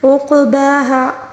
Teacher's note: ولا یخاف، خا کو پر پڑھیں گے، خا کے ساتھ پھر خالی الف ہے یعنی الف مدہ ہے، اس کو پھر ہم خا کے ساتھ ملا کے پڑھیں گے، ٹھیک ہے. عقباہا، عین کو درمیانی حلق سے ادا کریں گے اور قاف کو قلقلے کے ساتھ اور پر بھی پڑھیں گے، ٹھیک ہے، کیونکہ قاف کے اوپر ساکن ہے، ٹھیک ہے، اس وجہ سے قاف کو قلقلے کے ساتھ پڑھنا ہوگا.